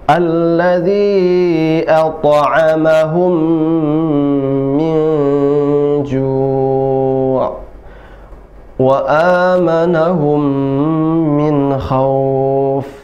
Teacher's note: Idgham mimi tadi ditahan 2 harokat. Mim pertama at'amahum sukun, mim yang kedua berharokat, maka mim pertama dimasukkan ke mim yang kedua